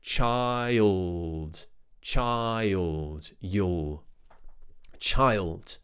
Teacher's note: there's also this Phantom Y sound happening in here it's just because it helps us get from the I to the L